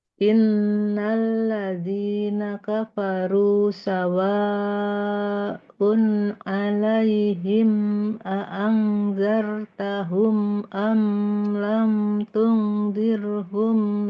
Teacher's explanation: Kurang panjang, Afwan. Sawa'nya 6 harokat.